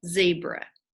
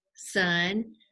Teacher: teeth and we're pushing air out sun zebra they're very similar zebra is voiced sun is unvoiced · Zebra is voiced, sun is unvoiced, and that's how you tell the difference.